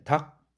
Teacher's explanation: 닭집 할 때 닭, 이것도 리을기역이지만 그냥 기역 발음으로 대표음으로 나고 마는 거죠.